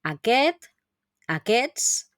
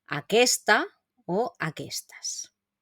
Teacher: fijaros que cuando tenemos el masculino esta s entre medio la s anterior a la t no la solemos pronunciar · la S anterior a la T no la solemos pronunciar, ¿no? Aquest, aquests, pero en el femenino sí, aquesta o aquestas.